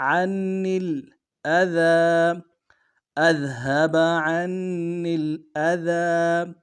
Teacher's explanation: عنی کے جو نون کو آگے لام کے ساتھ ملانا ہے